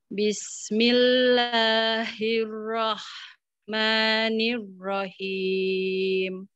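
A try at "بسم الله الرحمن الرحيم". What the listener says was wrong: Ra-nya tebelin lagi. Bismillahirrahmanirrahim. Pas di ro-nya yang kedua nirrahim. Nirrahim.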